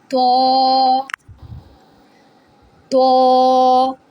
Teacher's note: To originates when the tip of the tongue touches the gums of the upper two front teeth. To. To is heavy letter.